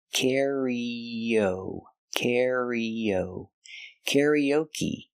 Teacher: To link the sound E with the O, you have the y sound like yellow.